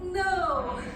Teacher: That's the fourth tone. That's the falling tone of Chinese.